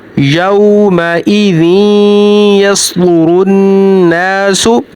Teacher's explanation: वाव साकन से पहले ज़बर है, तो वाव को थोड़ा सा खींच के पढ़ेंगे, लंबा करके पढ़ेंगे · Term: हरूफ लीन